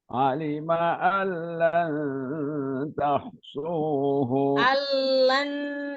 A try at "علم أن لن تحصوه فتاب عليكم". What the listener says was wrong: Alnya tahan. Allan tuhsuhu fataba alaikum. Coba panjangin dikit lagi.